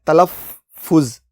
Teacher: لفظ تلفظ میں فے پر تشدید ہے، یعنی فے 2 بار بولا جا رہا ہے